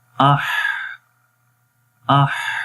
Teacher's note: دیکھیں اس میں سانس بھی آخر میں جاری ہے اور آواز بھی